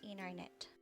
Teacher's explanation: The T after an N is often silent in American pronunciation. Instead of saying internet, Americans will frequently say internet. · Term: Silent T after N